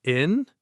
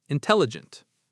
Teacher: It has 4 syllables. Where is the stress? It's on the second syllable. Tell. Intelligent.